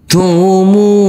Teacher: huruf mim dibaca panjang dengan panjang 2 harokat